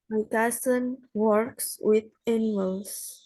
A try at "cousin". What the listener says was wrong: Pakai Z coba bacanya. Cousin tadi kan pakai S.